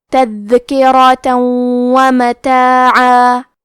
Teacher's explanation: ادغام کا معنی ہے حرف کو حرف میں داخل کرنا تو ہم تنوین کو واو میں ملا کے غنہ اور تشدید کے ساتھ یہ حکم کو ادا کریں گے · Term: ادغام بغنہ